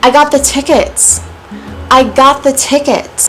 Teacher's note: this is a falling intonation because I started high and then I fell.